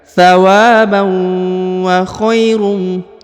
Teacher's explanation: Huruf kha diayun sekali karena di depannya terdapat ya sukun ya